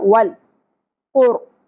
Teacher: نرم تالو سے ادا ہوگا اور پر پڑھیں گے